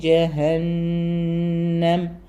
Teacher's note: നൂന് ഇരട്ടിപ്പിച്ച് തന്നെ നല്ല മണിച്ചു പറയാം